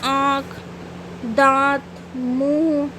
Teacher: मुंह और नाक दोनों से होता है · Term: अनुनासिक